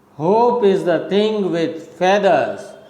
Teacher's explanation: so hope is stressed, is unstressed, the unstressed, thing again stressed.